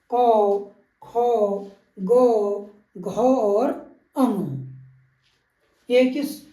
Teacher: कंठ से जो व्यंजन निकलते हैं उनको क वर्ग के व्यंजन कहते हैं। क वर्ग में क, ख, ग, घ और अंग।